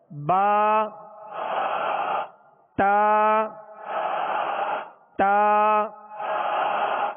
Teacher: زبان کی نوک اور اوپر کے دانتوں کی جڑ، اس سے تا دال تو 3 حروف ادا ہوتے ہیں. ان کا ایک ہی مخرج ہے، تا دال تو.